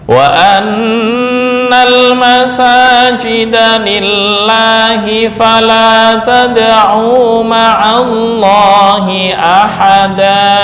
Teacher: Nah, untuk lillahi kenapa kok dibaca tipis? Karena sebelumnya berupa kasrah ya.